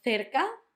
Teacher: Cerca had the th, the soft one, the th at the start with the th and ca at the end.